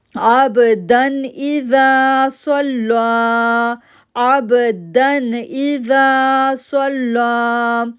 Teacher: اب صاد جو ہے وہ موٹا لیٹر ہے، حروف مستعلیہ میں سے ہے، صاد کو لام کے ساتھ جوڑا، تشدید کے لیے 1 سیکنڈ کے لیے ہم رکے، دین لا کو 2 سیکنڈ کے لیے ہم نے کھینچا · جب نیکسٹ لیٹر حمزہ ہو اور دال کے اوپر 2 زبر ہیں تو ہم یہاں پر غنہ نہیں کر رہے، یہاں پہ اظہار رول آ رہا ہے، ہم غنہ نہیں کر رہے.